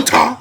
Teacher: the more you say it, there's more of an emphasis on the last syllable